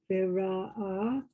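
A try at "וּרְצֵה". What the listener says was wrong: Viratsa. She made that sadi silent, thinking it was the iron, maybe. She said vira'a, whatever, but it's viratsa.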